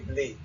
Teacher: in Creole, there's a clear shibboleth that distinguishes Creole from French, which is that we don't have rounded vowels. So in most, well, some dialects do have rounded vowels, but most dialects spoken by monolinguals only have, so for bleu, you would say blé.